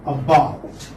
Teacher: Again the stress will come on the second syllable.